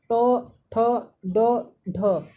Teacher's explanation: जीभ जो होता है वो कर्व बना के सीधे तालू से दोस्तों आपका लगता होगा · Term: मूर्धन्य